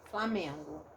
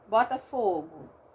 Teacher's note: O O sozinho, quando ele não é ditongo, ele vira um U fraco.